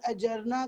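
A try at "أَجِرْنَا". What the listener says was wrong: اجرنا نہیں اجرنا، اجرنا جیم کے نیچے زیر ہے،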